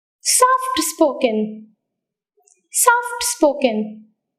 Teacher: compound adjectives take stress on the second part of the word